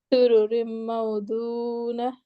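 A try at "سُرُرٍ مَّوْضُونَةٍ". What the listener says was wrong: بالکل سورو رم، یہاں میم مشدد پہ غنہ کریں۔ سورو رم، سورو رم،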